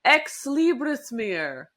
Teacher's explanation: You even had like a little bit of a rolling R in there